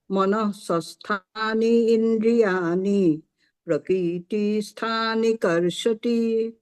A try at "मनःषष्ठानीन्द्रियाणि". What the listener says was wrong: यहाँ पे जो आपने इन दोनों वर्ड्स को ब्रेक कर दिया ना, अब हम इसको ब्रेक मत करिए। मनःषष्ठानीन्द्रियाणि, नीन्द्रियाणि ऐसा करिए। हाँ ई नहीं चाहिए, इसको एक ही वर्ड रहने दीजिए।